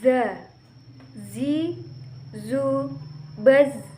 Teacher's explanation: Huruf za dikeluarkan dengan ujung lisan hampir di atas ujung gigi seri bagian atas. Diucapkan dengan mengalirkan suara tanpa diiringi dengan udara. Nah, huruf za ini suaranya mirip dengan suara tawon.